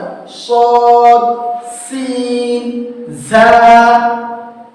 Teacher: 12 নম্বর মাখরাজ জিহ্বার আগা সামনের নিচের দুই দাঁতের আগার সঙ্গে লাগিয়ে উচ্চারিত হয়